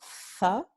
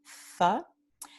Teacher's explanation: tenemos el alófono interdental fricativo sordo